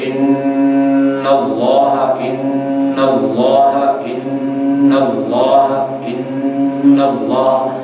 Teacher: जैसे पढ़ते इन्नल्लाह इन्नल्लाह इन्नल्लाह इन्नल्लाह, ये जो नून की आवाज़ है ये अब यहाँ से नून का मखरज तो वही है जो हमने पढ़ा है, लेकिन आवाज़ को हम नाक में लेके जा रहे हैं · یہ غننے کی آواز ہے جو ناک سے پیدا ہوتی ہے